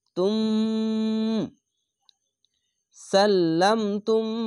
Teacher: পাশাপাশি দুটি মিম যদি আসে তো এখানে ঈদগামে মিম সাকিন গুন্না হবে